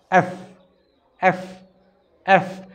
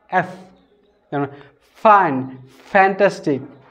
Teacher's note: সো এই উচ্চারণটা যখন আপনি করবেন তখন কীভাবে উচ্চারণ করবেন? উচ্চারণ করতে হবে এই নিচে ঠুট যে আছে, এই ঠুট, এই যে দেখেন, এই ঠুটটা দাঁতের নিচে যাবে।